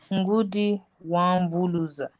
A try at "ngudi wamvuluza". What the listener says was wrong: Wamvuluza. You're not using You're not using the nose.